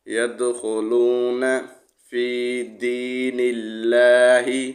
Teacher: یہاں لام سے پہلے والے حرف پر زیر ہے تو لام کو موٹا نہیں پڑھیں گے۔